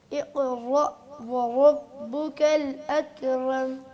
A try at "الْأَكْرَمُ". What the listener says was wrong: اکرم را موٹی ہے، را پر ہے.